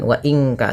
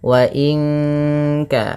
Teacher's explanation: Kemudian kita perhatikan lagi pada lafal wa in kanat. Nun mati bertemu kaf, suaranya disamarkan ke kaf, ya, terdengar bunyi wa in ka, langsung kepada makhraj huruf ka, yang dimana kaf makhrajnya pangkal lidah kita, di pangkal lidah.